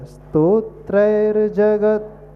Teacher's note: रेफ। तो उसका उच्चारण र के रूप में, स्तोत्रैर, हलंत र आएगा